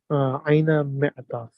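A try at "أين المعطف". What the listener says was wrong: Aynal, huh? Join that alif and lam. Aynal mi'tafu.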